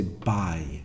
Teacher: we spend a lot of time there in the E type vowel at the end of bi